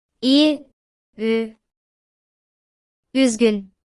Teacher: Ü is a rounded front vowel